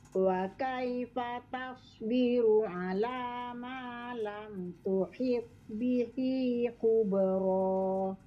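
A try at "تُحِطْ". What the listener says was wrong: Kurang jelas qalqalahnya. Tuhid.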